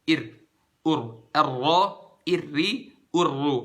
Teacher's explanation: Lidahnya tuh kalau kita baca huruf R. Huruf ro cukup sebentar aja. Sejenak. Satu harokat aja. Kayak cuma naik turun 2 kali.